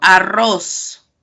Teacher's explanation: esta R se le conoce como una vibrante múltiple